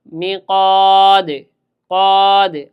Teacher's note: পাঁচটা কি কি কফ ত বা জিম দাল এর কাজ কি শব্দের যেখানে আসুক যদি শেষে আসে তাহলে একটু সপ্তভাবে বেশি জোরে ধাক্কা দিয়ে কলকল হবে কম্পন হবে